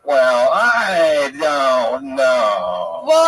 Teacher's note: when you do your comedy you kind of slow it down and you do more of a vocal fry